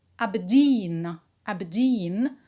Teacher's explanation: a british city as well so it is stressed on jean the primary stress on dean and we have a secondary stress on the first syllable